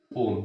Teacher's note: मतलब ओ का उच्चारण 3 मात्रा के बराबर करना है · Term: प्लुत